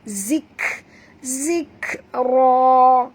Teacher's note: Dan bunyikan hamas pada kaf.